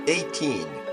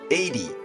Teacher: if it's 80, the stress comes first , so AY-dee, the T becomes a voiced D. · if it's 18, it's ay-TEEN, and the stress is here, so the T in TEEN is a regular T.